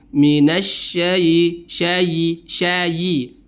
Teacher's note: memantulkan atau qalqala pada huruf ya-nya